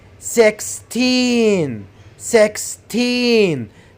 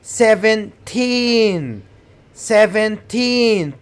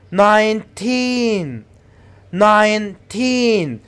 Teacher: you have to stretch teen put the stress on teen